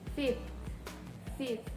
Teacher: The second fricative becomes a stop, which makes it more dissimilar as easier to pronounce. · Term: fricative dissimilation